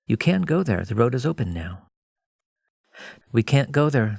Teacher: can is often a little longer, it's a more relaxed sound; can't is usually more clipped, a little shorter.